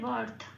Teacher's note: রয় হসন্ত আর তয় হসন্ত একটা বিটের মধ্যে এটা করতে হবে